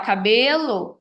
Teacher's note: vai ser no caso relacionado ao som da sílaba mais forte se eu falar cabelo eu sei que o b ali é a sílaba mais forte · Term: acento tônico